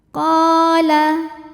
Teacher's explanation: Qala, hukumnya adalah mad tabi'i zahiri sebab ada alif yang sebelumnya berharokat fathah. Cara membaca huruf qafnya ini adalah dipanjangkan 2 harokat.